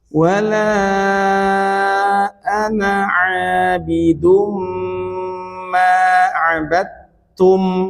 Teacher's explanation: Mutajanisan satu jenis makhrajnya ya, satu makhraj tapi beda sifat-sifatnya beda antara dal dengan ta